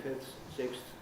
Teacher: what I've done is really blended the th and the th into a single articulation, the same act of uttering a consonant.